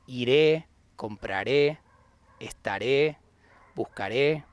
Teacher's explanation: all those conjugations with the accent in the last syllable